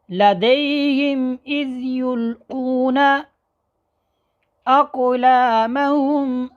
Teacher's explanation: قاعدہ یہ ہے کہ میم ساکن کے بعد میم اور با اور الف کے علاوہ باقی 26 حروف میں سے کوئی بھی حرف آ جائے تو میم کو اپنے مخرج سے ظاہر کر کے پڑھیں گے، واضح کر کے پڑھیں گے، غنہ نہیں ہوگا